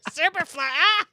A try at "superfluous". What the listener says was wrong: Superfluous. No, superfluous. Emphasis on the wrong syllable. superfluous.